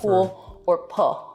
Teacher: that's an L turning into a vowel in a word like pool or pull.